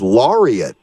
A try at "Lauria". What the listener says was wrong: Yeah, it's actually the T is silent. It's Lauria, and it's French for Lawrence.